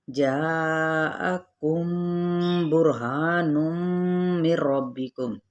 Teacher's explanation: اب یہاں پہ ہے دال پہ قلقلہ، جاءکم، یہاں پہ 4 حرکت لمبا کریں گے اور حمزہ کی زبر کو واضح طور پہ ادا کرتے ہوئے میم ساکن کے بعد با آ رہا ہے تو یہاں پہ اخفائے شفوی کا قاعدہ ہے